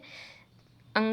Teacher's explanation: अंगा है वो नासिका और कंठ के माध्यम से बोले जाते हैं